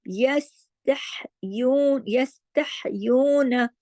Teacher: وَيَسْتَحْيُونَ وَيَس باریک حروف ہے اور سین کو جماؤ کے ساتھ، تح میں ہا جو ہے گلے سے پڑھا جائے گا لیکن ہا کو باریک طریقے سے پڑھا جائے گا، جماؤ کے ساتھ ہلانا نہیں ہے۔ · نون زبر نا جو ہے ایک حرکت ہے، جبکہ یو 2 حرکات کھینچے گا کیونکہ واو مدہ ہے